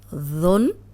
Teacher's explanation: ذن یہ نرم ہے، سیٹی کی آواز نہیں آئے گی۔